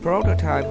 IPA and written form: ˈprəʊtətaɪp (prototype)